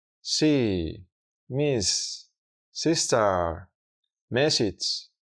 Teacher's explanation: al pronunciar este sonido en inglés se estrecha el canal de salida de aire